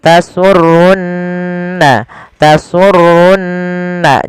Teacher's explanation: ada nun berharakat tasdid maka ia kita baca dengan bacaan gunnah, ditahan suara nunnya. Tasurrunna, tasurrunna, jangan langsung tasurrun nazirin, tapi tahan dulu.